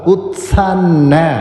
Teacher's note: ഉത് എന്നൊന്ന് ഹോൾഡ് ചെയ്തത് ഒന്ന് ഹോൾഡ് ചെയ്തിട്ടാണ് പിന്നെ സ വരുക ഉത്സന്ന അതലപം ബലം കൊടുത്തുതന്നെ പറയുക ഉത്സന്ന കുലധർമ്മാണാം കുലധർമ്മ ആധ നേരത്തെ സൂചിപ്പിച്ചതുപോലെ